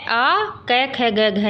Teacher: आ कै ख ग घ ये है और विसर्ग, इन सब का उच्चारण स्थान क्या होता है, कंठ।